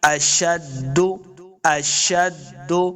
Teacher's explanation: شن پہ سیٹی کی آواز آئے گی، دال کے ساتھ ملا کے پڑھنا ہے، دال مشدد ہے۔